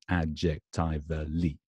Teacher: 5 syllables. Secondary stress on the first syllable.